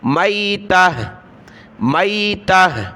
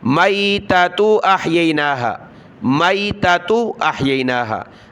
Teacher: یہ آخری گولتا ہا بن جائے گی جب وقف کریں گے، رکیں گے · یہاں پر سانس لیا تو میتہ، میتہ، اگر ملا کر پڑھا تو دونوں تا پڑھنی ہے